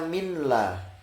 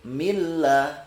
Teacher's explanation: nun sukun bertemu dengan lam misalnya diganti lam, dia tidak bisa dibaca min la, tapi dibaca langsung masuk milla